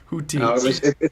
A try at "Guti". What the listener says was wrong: No, it's a hard G. It's Guti.